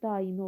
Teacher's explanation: A, i saitlərin arasında y samit əlavə olunur.